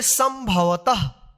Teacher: ये जो है ना बिंदी ऊपर है, तो इसका यहां पे आधा म उच्चारण होगा